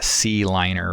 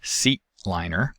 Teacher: for example a minimal pair like c liner versus seat liner has a glottal stop in place of the t consonant to indicate the presence of the t there